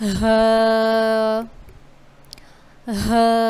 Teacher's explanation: یہ جو حروف ہے یہ حلق کے نیچے والے حصے سے ادا ہوگا